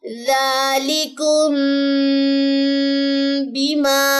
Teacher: गुना करेंगे और नाक में आवाज को लेके जाके छुपाएंगे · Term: इफाए शफवी